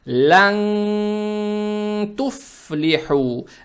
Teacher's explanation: Это правило ихфа. То есть в данном случае букву нун надо произносить скрыто, удерживая через нос.